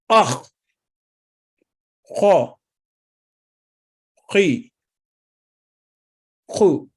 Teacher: खौ, ये हरूफ हल्किया में से है, यानी हलक के ऊपर वाले हिस्से को जबान की जड़ के करीब से टकराएं तो ये हर्फ अदा होता है। तफखीम है, मोटा लेटर है।